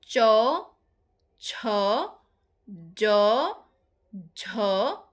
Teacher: জীভের ডগা খানিকটা প্রসারিত হয়ে শক্ত তালুর কাছে বায়ুপথে বাধার সৃষ্টি করে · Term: তালব্য ব্যঞ্জন